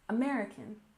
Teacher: we stress the second syllable in American